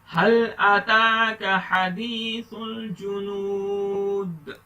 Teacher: دال پر کلکلا کریں گے, ڈو کلکلا.